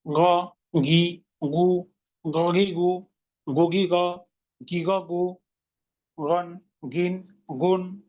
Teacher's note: দুইটা পয়েন্ট, একটা আংশিক খরখরা, একটা মোটা। গ, বাংলার গয়ের মতন একটু খরখরা ভাব থাকবে।